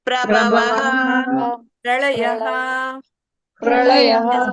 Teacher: ಅಲ್ಲಿ ಪ್ರಭವಹ ಅಂತ ಇರುವಂತದ್ದು ಪ್ರಭವಂ ಅಲ್ಲ ಪ್ರಳಯಂ ಅಲ್ಲ ಪ್ರಳಯಹ ಪ್ರಭವಹ ಅಂತ ಬರುವಂತದ್ದು ವಿಸರ್ಗ ಅಲ್ಲಿ ಇರೋದು